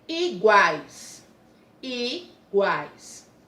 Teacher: Quando eu falo guais, o U tem um som fraco, semivogal. O A e guá, ó, vogal, tem um som forte.